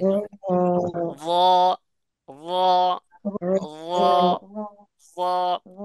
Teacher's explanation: ঠোঁটটা গোল আকৃতি করা যাবে না ঠোঁটটা দুই দিকে বিস্তৃত অবস্থায় থাকবে · আপনি যখন র বলবেন তখন দেখবেন জিহ্বার আগাটা উল্টায় যাবে